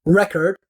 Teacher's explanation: you pronounce the E, for example, very differently in record, where it's just the reduced schwa sound rather than the like an actual E sound.